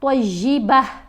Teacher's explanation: اب یہ گول تا کے اوپر وقف آیا نا تو یہ سائلنٹ ہو جائے گی، تا کی آواز نہیں آئے گی، اب ہا کی آواز آئے گی